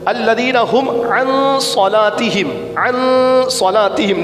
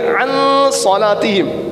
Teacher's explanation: نون ساکن کے بعد حرف اخفا میں سے صاد آ گیا، یہاں پہ اخفا کا قاعدہ غنہ کریں گے